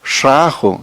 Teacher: no hay nada de oclusión ya en rajo